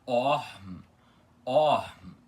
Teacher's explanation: esse o aspirado com o arzinho no final e logo em seguida o m puxado e pronunciado